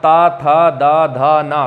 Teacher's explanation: आपकी जो जीभ है वो दांतों को स्पर्श कर रही है, दांतों को छू रही है, अर्थात ये कौन से वर्ण है, दंत वर्ण है।